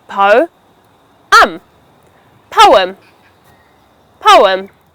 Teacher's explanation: this word has got two syllables, po and em, where the stress is placed on the first syllable